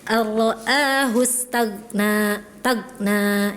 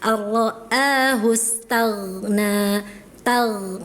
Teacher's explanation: Kemudian hati-hati ketika huruf ghain sukun ya. Ghain itu punya sifatnya rokhawah ya. Ketika sukun maka suaranya mengalir. Jangan ditahan, jangan diputus. Bukan syiddah tapi rokhawah, ngalir ya.